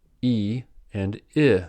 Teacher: E and I, for example, are high and front vowels. Since they are produced in close proximity, these two vowels can be hard to distinguish and thus hard to pronounce correctly for us non-native English speakers.